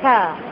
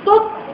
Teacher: Makhraj sama, tapi pada sebutan to, penuh lidah tu, kita rasa penuh dalam mulut. Kalau ta, ta, kita buka, kita senyum, kita renyih.